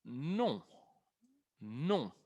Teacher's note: No, sin pronunciar la N.